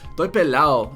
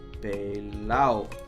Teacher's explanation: No D because it's Puerto Rico